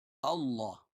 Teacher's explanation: اللہ کا لام موٹا پڑا جائے گا